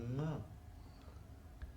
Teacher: make an opening, allow the air to pass through the nose, and the sound becomes nga.